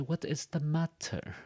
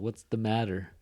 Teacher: In California English, that T becomes a D sound.